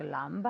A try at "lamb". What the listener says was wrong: No, la B no se pronuncia. No lamb, pero lamb. La B es completamente silenciosa. Lamb.